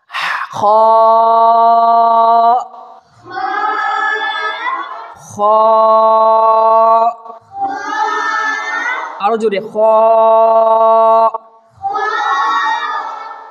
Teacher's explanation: খার উচ্চারণ এই হলকের গলার প্রথম অংশের দিকে উচ্চারণ হবে। হালক যেটাকে বলা হয়, এই গলার প্রথম অংশের দিকে, এখান থেকে হা উচ্চারণ হবে, প্রথম অংশ।